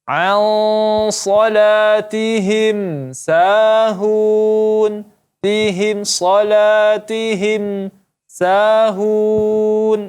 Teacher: mim mati bertemu sin, maka izhar syafawi, tidak dibaca dengung